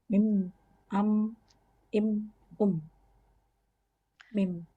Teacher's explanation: kedua bibir dalam keadaan tertutup disertai gunah.